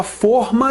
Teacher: Comprei uma forma de bolo, timbre fechado, vasilha